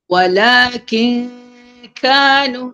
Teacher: Ni ikhfa nun dengan kaf dia terus ke belakang.